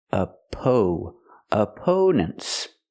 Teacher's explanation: up a a opponent the stress is on the second syllable we use a long o sound like no and go for the second syllable AO opponents and the last syllable is relaxed n n opponents